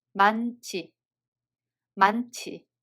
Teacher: Hieut is followed by [ㅈ] so [ㅈ] becomes [ㅊ]